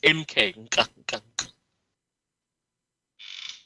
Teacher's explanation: Just pronounce the N and the K together, but don't put a vowel in between them.